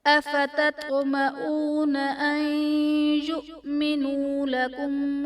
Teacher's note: این یؤمنو میں نون ساکن کے بعد حروف یرملون میں سے یا ہے تو یہاں پر ادغام مع الغنہ کا قاعدہ ہوگا، یعنی نون ساکن میں ہم غنہ کر کے پڑھیں گے